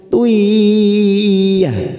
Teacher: dumah tanwin bertemu ya idgham biguna, siap masuk pada huruf ya, kita tahan 3 ketuk